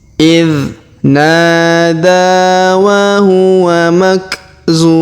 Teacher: Huruf zu kita panjangkan 2, 4 atau 6 harokat karena di depan huruf zu terdapat waw sukun sebelum huruf pemberhentian, dan huruf pemberhentian huruf mun kita sukunkan atau kita matikan.